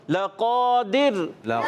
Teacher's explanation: قاف کو پر رکھیں گے حروف مستعلیہ میں سے، موٹے حروف میں سے، اس کو موٹا ادا کریں گے